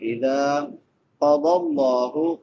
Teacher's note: قاف بھی موٹے حروف میں سے ہے اور ضاد بھی موٹے حروف میں سے ہے، دونوں کو پر پڑھیں گے۔ لفظ اللہ بھی پر پڑھا جائے گا کیونکہ لفظ اللہ سے پہلے زبر ہے۔